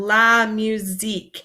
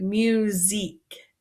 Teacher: La musique this sound might be a little bit hard because it makes a z sound instead of this s